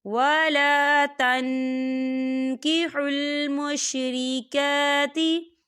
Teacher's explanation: کاف جو ہے اکفا کا ورڈ ہے، تو ہم یہاں اکفا کریں گے، نون ساکن کی آواز کو ناک میں چھپائیں گے